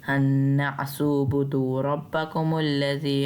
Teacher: हा को नून तशदीद से मिलाते हुए भी गुन्ना करते हुए जाना है